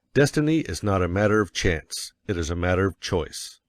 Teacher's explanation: Of course, you will want to emphasize destiny, for it is the principal idea in your declaration. And you will put some emphasis on not, else your hearers may think you are affirming that destiny is a matter of chance. · And you will put some emphasis on not, else your hearers may think you are affirming that destiny is a matter of chance. By all means, you must emphasize chance, for it is one of the two big ideas in the statement. Another reason why chance takes emphasis is that it is contrasted with choice in the next sentence.